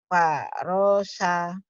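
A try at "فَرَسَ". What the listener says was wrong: Nggak boleh ditekan. Farosa, nggak boleh. Farosya.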